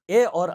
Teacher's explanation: ए और ऐ यह कंठ तालु वाले हैं।